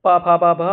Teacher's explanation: इसमें हमारे जो लिप्स हैं, हमारे जो होंठ है वो चलते हैं, तो इसलिए इनका उच्चारण स्थान ओष्ठ्य हो जाता है, ओष्ठ या ओष्ठ्य हो जाता है।